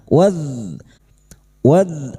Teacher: Wadkuru dzal sukun. Jangan dipantulkan ya. Huruf dzal bukan qalqalah. Waz. Wad huruf dal cukup kita alirkan suaranya dan nafas yang tertahan jahr dan rakhah tertahannya nafas dan mengalirnya suara.